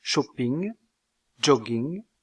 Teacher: on peut ajouter la consonne nasale, ng, empruntée à la langue anglaise. On trouve cette consonne à la finale de mots comme shopping, jogging, etc.